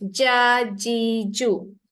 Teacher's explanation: Bila baca ja, rasakan lidah tengah-tengah tu naik ke atas. Dia tak ada kena-mengena dengan kerongkong. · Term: huruf jim